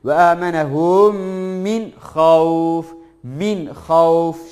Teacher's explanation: sakin nundan sonra izhar harflerinden biri geldiği için idgamsız, gunnesiz ne yapıyoruz? Aşikar bir şekilde okuyoruz.